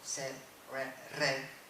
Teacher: la desaparición de la D final, se convierte en R en el imperativo como en la mayor parte del castellano, pero desaparece en sed y en red, por ejemplo, sed, red.